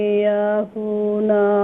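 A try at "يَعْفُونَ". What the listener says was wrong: औ याफ़ुवल्लज़ीना नहीं है, नून नहीं है यहाँ पर।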